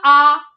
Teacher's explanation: विव्रत मतलब पूरा खुला हुआ